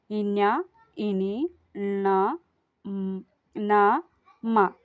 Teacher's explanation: ముక్కు సహాయంతో పలుకబడేటటువంటి అక్షరాలను అనునాసికాలు అంటున్నాం. అంటే ముక్కు సహాయంతో ఒకసారి పలికి చూడండి, ముక్కు సహాయంతోనే పలుకుతాం అవి.